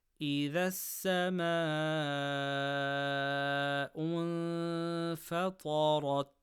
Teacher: Stretch letter before hamza in the same word, mad muttaṣil, 4 harakas. · Ta from khussa daghatin qidh, full mouth. Ra with fatha, full mouth.